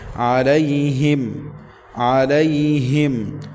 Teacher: ہا سینے سے ادا کریں گے